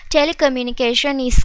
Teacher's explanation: ඒ වගේම මේ නිල් පාටින් පෙන්නලා තියෙන්නේ අපි මේ words දෙක සාමාන්‍යයෙන් මේ telecommunication කියන එක නතර කළා වෙනම is කියන එක pronounce කරන්නේ නැහැ. අපි මේ දෙකම එකට pronounce කරනවා telecommunication is කියලා. ඒ කියන්නේ මේ දෙක අතර pause එකක් නැහැ. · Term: linking words